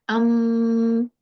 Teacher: it has a sha I have to stress upon it and make a nasal sound for at least two or three counts